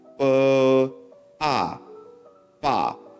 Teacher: There's only a downward pitch to the combination. · The fourth tone is the opposite to the second sound because it's a downward tone.